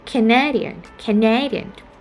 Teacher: when it turned to the adjective we tend to have the second syllable stress